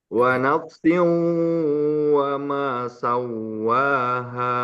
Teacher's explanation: Sau itu mulut, nggak masuk ke hidung. Yang pertama masuk ke hidung.